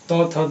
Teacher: दंत से आपका त थ द द बोला जाता है · जैसे आप त थ द बोलेंगे तो जीभ जो है आकर दांत में चिपकेगा।